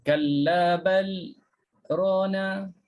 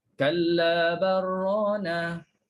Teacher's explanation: sakta terus idghamkan lam dalam ra